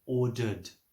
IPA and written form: ˈɔː.dərd (ordered)